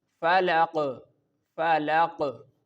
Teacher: when we pronounce this word falaq, the Qalqalah is performed and in Qalqalah the sound will bounce back